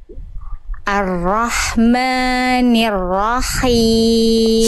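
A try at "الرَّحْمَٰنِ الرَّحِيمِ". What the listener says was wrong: Sip, tinggal dipertegas sedikit di huruf ro-nya. Dia kurang tegas aja. Di ini ya, di makhrajnya arro getarannya, jadi jangan arro, agak, jadi dia kurang jelas getarannya. Jelaskan lagi. Arro.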